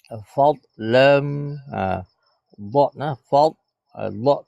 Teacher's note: dia bukan qalqalah ha dia tidak boleh dipantulkan